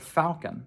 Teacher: now 97% of English speakers pronounce falcon with an /l/